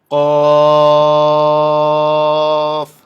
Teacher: কফ হরফটি জিহ্বার গোড়া তার বরাবর উপরের তালুতে লাগাইয়া শক্ত করে বলতে হয়।